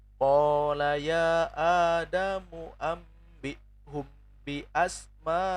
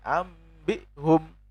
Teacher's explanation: Iklab apabila ada nun sukun dan tanwin bertemu dengan ba, maka wajib menukar bunyi nun sukun dengan suara mim disertai dengung dan samar